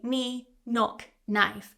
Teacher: Words that typically start with K and N, so K and N, we don't pronounce the K. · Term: silent K